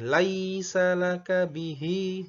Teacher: Jadi yang panjang i-nya, bukan la-nya, bukan laisa, tapi laisa laka bihi.